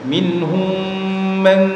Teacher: mim sukun bertemu mim, nama bacanya idgham mimi ya. Cara bacanya dibaca dengung · nun sukun bertemu dengan ha. Cara bacanya dibaca jelas tanpa ditahan ya. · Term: izhar halqi